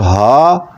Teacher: ہا یہ انتہائی حلق، یہ سینے کی طرف جو ہے وہاں سے ادا ہوگا